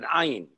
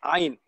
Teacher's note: huruf Ain, makhrajnya di tengah halqum